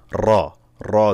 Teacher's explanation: বোঝা যায় না যে কি উচ্চারণ করতেছি তো আপনারা খেয়াল করবেন যেন জিহ্বারটা কাঁপে জিহ্বার আগাটা কাঁপবে